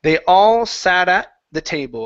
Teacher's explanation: So, we have a flap T into a stop T. Okay. And then give me a good L at the end of the word table.